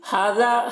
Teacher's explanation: ہا میں کھڑا زبر ہے اور ذال میں دیکھیے الف مدہ ہے تو دونوں کو ایک الف کے برابر کھینچ کر پڑھیں گے